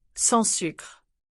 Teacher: Did you hear how sans sucre almost sounds like sa sucre with a nasal vowel?